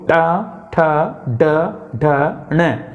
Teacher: जीभ लुढ़क जाती है और मुर्दा को स्पर्श करती है। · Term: मूर्धन्य वर्ग